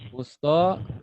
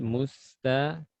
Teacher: To karena terangkat dinanya bagian belakang, sifatnya tebal. Adapun ta sifatnya tipis, jadi tidak boleh ditebalkan. Ta, dan tidak boleh kita mengucapkan mustaqim, musto, bukan musto, musta.